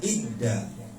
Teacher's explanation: Memasukkan sesuatu kepada sesuatu. Dza dimasukkan ke dal. Jadi dza itu jadi ngumpet. Maka dibacanya idda. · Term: idgham mutajanisain